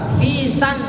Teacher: Hamzanya enggak terbaca, langsung ke nun.